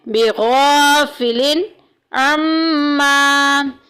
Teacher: بغا میں دیکھیں الف پیچھے زبر آ گئی، الف مدہ کا قاعدہ جاری ہو رہا ہے، ایک الف کے برابر لمبا کریں گے